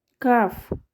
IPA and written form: kɑːf (calf)